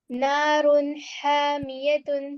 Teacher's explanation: کے درمیانی حصے سے بڑی ادا ہوتی ہے. حلق کے درمیانی حصے سے بڑی ہا ادا ہوتی ہے